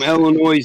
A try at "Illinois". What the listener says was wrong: You don't pronounce the S in the Illinois. a lot of people get mad at you for that.